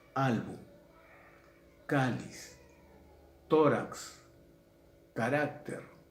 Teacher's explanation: Entonces, grave o llana, mayor fuerza de voz en la penúltima sílaba, y si termina en consonante que no es ni N ni S, lleva tilde.